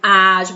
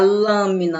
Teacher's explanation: Ágil, você abre mais a boca do que se você pronunciar lâmina, né? Lâmina, você quase não abre a boca.